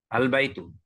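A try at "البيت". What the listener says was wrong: উনি যেটা বললেন এটা একদম শুদ্ধ, সঠিক।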